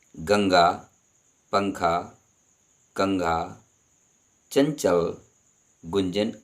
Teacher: अनुस्वार ध्वनि का उच्चारण केवल नाक से किया जाता है